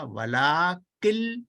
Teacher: آپ نے, انہوں نے تو نون پڑھا ہی نہیں, انہوں نے پڑھا ولاکل, یہ نون ایک لام میں بدل گیا, یہ دوسرا لام اس کے ساتھ مل گیا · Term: ادغام بغیر غنہ